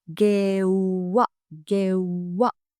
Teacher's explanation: ගෙව්වා, paid. Make sure to pronounce the w sound as a long sound.